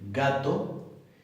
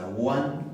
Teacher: no se cierra completamente y se suelta sino que se deja una hendija por la cual pasa el aire de manera continua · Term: no oclusiva